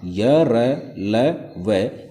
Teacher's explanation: इनसे उत्पन्न जो ध्वनि है या इनसे उत्पन्न जो वायु है वह मुख के अंदर ही ठहरी हुई प्रतीत होती है, बाहर निकलती हुई प्रतीत नहीं होती है। इसलिए इन्हें अंतस्थ व्यंजन कहते हैं।